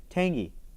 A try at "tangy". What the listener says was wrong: Are you saying the G? There's no G. It's tangy.